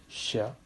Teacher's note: post alveolar sounds, wherein your tongue goes just behind your alveolar region